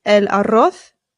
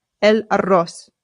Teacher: Remember that the double R in Spanish is rolled, so rrr. And the Z in Spain Spanish makes the TH sound, right? And in Latin American Spanish, it's much closer to how we pronounce it in English.